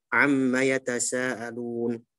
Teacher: Nanti dalam bahasan gunnah itu masuk gunnah yang akmal matakun gitu ya. Gunnahnya paling sempurna karena dia mim bertasydid.